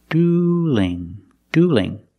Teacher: Now the L in dueling is between vowels. So we have to change that L to a light L.